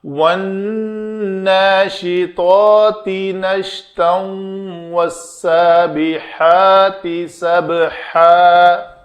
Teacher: حروف یرملون میں سے واو ہے تو یہ تنوین کے بعد واو تو یہ ادغام ہوگا